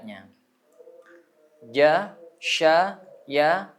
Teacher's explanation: itu satu makhraj bisa kita rasakan pas ada di tengah lidah